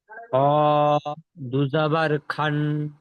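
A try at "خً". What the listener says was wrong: খান নয়, খন। খ দুজাবার খন।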